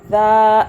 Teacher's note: ہاذا، دال کھڑا زبر دا، دال کو نرمی سے پڑھنا ہے، زبان ہلکی سی باہر کر کے